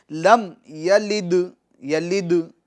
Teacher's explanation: آگے چلتے ہیں، لم یلد ولم یولد، لم لم لم میم کے سکون میں جنبش نہیں دے گے، لم آواز مخرج میں رک جائیں گی، لم یلد، یلد دال میں قلقلہ ہوگا، آواز لوٹے گی